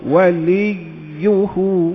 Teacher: Okey, wali tu, ianya bersabdu, sabdunya wajib. Jadi kalau boleh lah, kita cuba dapatkan bunyi ya tu dua kali. Masa sebut li tu, sudah ada dengan makhraj ya.